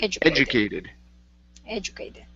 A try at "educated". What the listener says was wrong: Good.